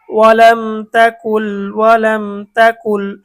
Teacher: মিম সাকিনের পরে তা আসছে, তাহলে এটা মিম সাকিনের ইজহার, গুন্না ছাড়া স্পষ্ট।